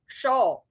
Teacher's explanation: मूर्धा वाले शौ का उच्चारण होगा मूर्धा, ऊपर जीभ ऊपर करके